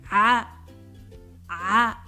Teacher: They sound like a high-pitched version of the English A sound, but squeezed from the back of the throat